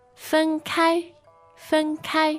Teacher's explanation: That's fen for you. First tone, and it occurs in lots of contexts.